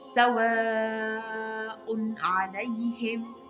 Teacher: سواء علیهم دلته دغه مد تاسو ګورئ دا په نوم د مد متصل یادیږي یعنی پنځه حرکت به پورته کش کوو